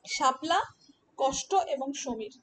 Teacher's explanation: এই তিনটি বর্ণকে বেশিরভাগ মানুষ একটি বর্ণ তথা একটি ধ্বনি হিসাবে উচ্চারণ করে